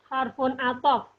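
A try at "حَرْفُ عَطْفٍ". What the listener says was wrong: Harfu. Jangan fun ya. Harfu. Atau fin.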